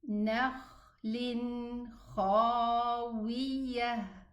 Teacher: When I stop on a sukun. This ta at the end of the word, when I stop on it, it's pronounced a ha.